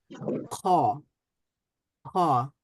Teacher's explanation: খয়ের মাখরাজটা হচ্ছে জিহ্বার হলকের একেবারে শেষ ভাগ থেকে একেবারে নরম যে প্যালাটটা রয়েছে সেখানে এক ধরনের ভাইব্রেশন তৈরি হবে খ উচ্চারণ করার সময়।